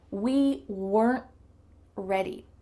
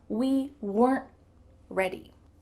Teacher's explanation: In fast English, usually that final T is stopped short. We call this a stopped T.